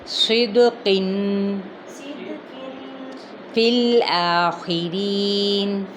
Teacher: قاف بھی موٹا ادا کیا جائے گا کیونکہ یہ حروف مستعلیہ میں سے ہیں